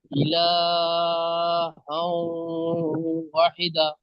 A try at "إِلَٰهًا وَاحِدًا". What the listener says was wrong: ওয়া টান দেন, ও আলিফ জেবার ওয়া, টান দেন। যদি দা পড়েন তাহলে দা একালিপ টান হবে, আর দান পড়লে টান দিতে হবে না। ওয়াহিদান।